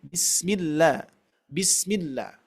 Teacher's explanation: Sering terjadi huruf sin ini Bapak Ibu sekalian, kita tidak mengalirkannya ya.